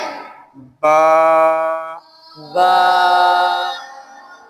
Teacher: बा के ऊपर इसको एक अलिफ के बराबर खींचना